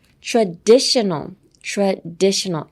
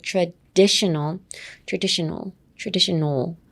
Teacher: Emphasis on the DI.